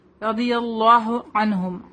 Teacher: عین نون ساکن کے بعد ہا ہے، یہاں پہ تو ان کو ظاہر کریں گے. عنہم عین بولیں گے، اس کو حمزہ کی طرح نہیں بولیں گے